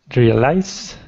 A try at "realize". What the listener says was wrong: Realize. Yeah, it's actually two syllables, not three. It's not realize. It's real eyes. Realize. So it seems like one of your things is the word stress as well, which I sent that link before, but here it is again.